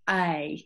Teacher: you start off open and become smiley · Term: diphthong